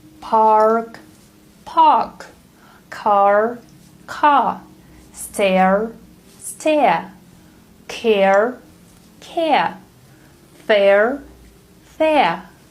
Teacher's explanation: in British English, the R sound is dropped if it goes at the end of the word or after a vowel sound